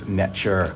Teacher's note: Netcher is God, or a lot of people read it as Neter because of the T, but the T with Egyptian hieroglyphs, it's actually a ch sound, so it's Netcher. Netcher is what we would say a god today, but it's best viewed as a principle or aspect of nature and cosmology as well.